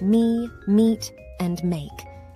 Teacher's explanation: the basic M sound which is made by bringing your lips together and allowing air to flow out of your mouth